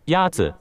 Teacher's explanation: Is it Yazi? Yazi Is pronounced with a first tone. In Mandarin, there are 4 tones, which are essential to distinguish the meaning of words. The first tone is a high-level tone.